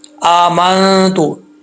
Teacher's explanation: ناک میں آواز کو چھپا کر پڑھتے ہیں، اس لیے اس کو اخفا کہا جاتا ہے۔ · حمزہ کے اوپر کھڑا زبر ہے، سٹینڈ زبر بھی بول سکتے ہیں آپ، اس کو ایک الف کی مقدار لمبا کرنا ہے، جو اکثر لوگ چھوڑ دیتے ہیں، ایک الف کی مقدار لمبا کرتے ہی نہیں ہیں، ٹھیک ہے؟